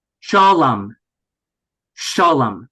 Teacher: we keep the accented syllable the same, shah, but the loy becomes reduced, like basically a schwa